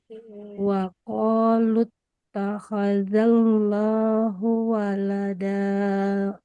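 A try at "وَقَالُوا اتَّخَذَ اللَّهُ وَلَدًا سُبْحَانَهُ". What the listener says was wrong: Oke, karena kita sedang berlatih ikhfa, maka di sini disambung. Oke, huruf ba qalqalah.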